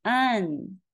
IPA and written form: an (an)